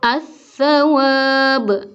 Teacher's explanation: Contoh berikutnya, halakum, ininya dicuekin langsung ke lam. As-sawab, padahal kan sebenarnya ada alif lam, tapi karena diidghamkan langsung ke sa, alif lamnya seperti tiada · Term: idgham kamil